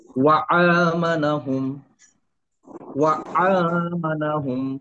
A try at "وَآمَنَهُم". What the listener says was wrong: এটা কিন্তু আইন না, আ পড়তে হবে। ও আ, গলা ছেড়ে দিয়ে আসবে, ও আ মানাহুম।